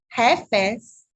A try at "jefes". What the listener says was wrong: Just H. It's like a H-E-F-E-S. Jefes. You're saying it like there's an L. There's no L there. So it's just jefes.